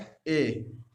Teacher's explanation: कंठ तालव्य है जो पूरी तरीके से कंठ और तालव्य से निकलता है